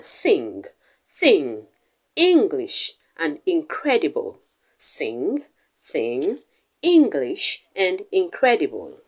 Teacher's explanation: However, the n sound takes place somewhere at the alveolar ridge, together with the tongue and the alveolar ridge come together to pronounce the n sound. However, the sound is pronounced somewhere at the back of the mouth with the velum lowering down to block the flow of air, and then the air is redirected through the nostrils to produce the velar sound. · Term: voiced velar nasal